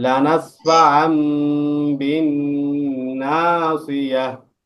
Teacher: ইকলাবের গুণ হবে। হ্যাঁ, তানবিনের পরে ইকলাবের হরফ বা আসছে, এই জন্য তানবিনকে মিম দ্বারা পরিবর্তন করে গুণ করে পড়তে হবে।